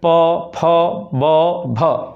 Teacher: पवर्ग को मैंने बताया है कि लास्ट में ये उच्चारण करके भी समझ सकते हैं। प फ ब भ आपका ओष्ठ चट रहा है, इसलिए इसको ओष्ठ वर्ण या ओष्ठ उच्चारण स्थान।